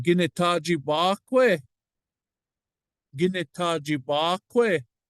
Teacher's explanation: the E is a long vowel. We don't drop long vowels, we drop the short vowels. So we have E at the end of this one.